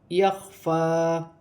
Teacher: خا حلق سے ادا کیا جائے گا